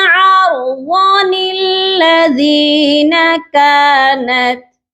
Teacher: پھر آپ نے اس نون قطنی کو پڑھنا ہے تو یہاں پر آپ نے ضاد کو لمبا نہیں کرنا